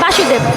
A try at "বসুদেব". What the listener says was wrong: এটা কিন্তু ভুল হয়েছে, একটু ভালোভাবে বলেন। এটা মানে কাছাকাছি গেছে কিন্তু উচ্চারণটা ভুল হয়েছে। বাসুদেব হবে না, বসুদেব হবে।